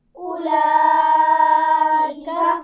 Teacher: ठीक है, ना इस पर ज़बर ज़ेर पेश है, ना जज़्म है, ना शद है, इसलिए हम इसको नहीं पढ़ेंगे। हमज़ा पर पेश पढ़ेंगे, उसके बाद फ़ौरन लाम की आवाज़ पढ़ेंगे।